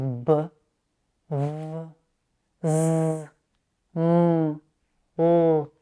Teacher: These are voiced consonants and you will feel the vibrations of your vocal cords on your fingers.